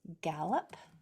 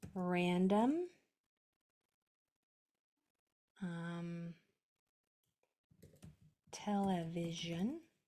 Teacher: Do you see how that O is almost to the end of a longer word and there's a consonant after it, so it changes to the schwa sound